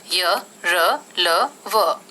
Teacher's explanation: अंतःस्थ व्यंजन, इन व्यंजनों का उच्चारण स्वर एवं व्यंजन के बीच होने के कारण इन्हें अंतःस्थ व्यंजन यानी मध्य में स्थित कहा जाता है। इन व्यंजनों का उच्चारण करते समय जीभ मुंह के किसी भी भाग को पूरी तरह स्पर्श नहीं करती है।